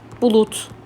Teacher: Baxın, d hərfi öz kar qarşılığına keçdi. Bulud yazıldı, bulut deyildi.